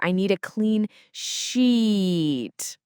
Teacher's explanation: the tip here is really to hold that E sound for sheet. Just imagine holding a long note when you sing or, holding on to that E for a bit longer.